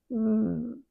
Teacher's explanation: The bottom lip goes backward inside the mouth and between the teeth and it's voiced